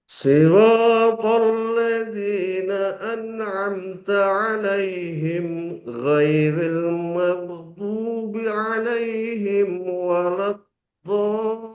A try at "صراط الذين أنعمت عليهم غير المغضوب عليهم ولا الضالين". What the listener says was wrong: Alaihim jangan ada jarak dengan gha, dia langsung halus. Siratal ladzina an'amta alaihim ghairil maghdubi alaihim waladdo biasanya penuh mulut. Waladdallin.